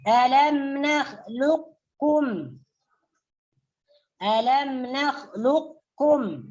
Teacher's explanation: Idgham mutaqaribain. Jadi di sini kita boleh terus memasukkan huruf qaf ke dalam kaf. Jadi qafnya seakan-akan tidak terbaca.